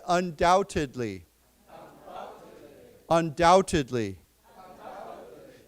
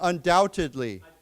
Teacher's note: we do not pronounce the B, right? There's no B pronounced there.